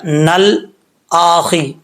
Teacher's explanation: نون کے بعد لام جو ہے ساکن ہے، اس میں قلقلہ کرنے سے آپ نے بچنا ہے